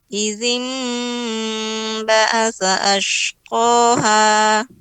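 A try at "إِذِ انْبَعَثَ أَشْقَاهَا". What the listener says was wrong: Ainnya lebih ditampakkan lagi, Izin ba'asa ashqaha.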